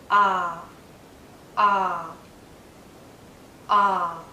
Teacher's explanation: it's a very open sound as well my lips are relaxed but my mouth is in a very open position my tongue is low inside my mouth low in a bit · are relaxed but my mouth is in a very open position my tongue is low inside my mouth low in a bit forward so that the tip does touch the back of my bottom front teeth